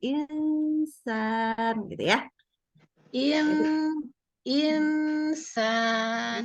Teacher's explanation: Jangan jangan di N kan ya, lidahnya nggak boleh kena ke langit-langit. Insan. Ya, jadi kalau nunnya ketemu sin, dengungnya nggak boleh nggak boleh gitu lidahnya.